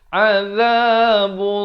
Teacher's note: Dibaca tebal lafzalah ini dengan 2 harakat.